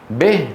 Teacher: أولا خلط صوتها بشيء من صوت الفتحة، يعني بدل ما يقول به يقول به. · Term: كسرة مخلوطة بفتحة